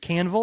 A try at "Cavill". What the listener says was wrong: Well, there's no N in his damn name, so that is right out.